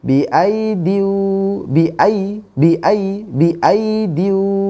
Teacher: biidu ya karena ynya yang dibaca hanya ya yang pertama Ya ya yang kedua tidak dibaca maka tidak panjang bacanya